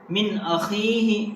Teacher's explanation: یہاں پر main point ہے نون ساکن کا، نون ساکن کے بعد اظہار لیٹرس میں سے حمزہ آیا ہے، اس لیے یہاں اظہار ہوگا